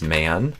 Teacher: you add in this schwa sound just for man